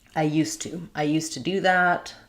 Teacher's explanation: because the T is voiceless these Z sounds change to S sound